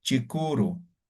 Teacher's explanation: La vocal A y la U he unido aquí, ¿no ve? Solamente me he quedado con la vocal U y como he unido dos palabras separadas, lo he vuelto en uno, he utilizado la diéresis.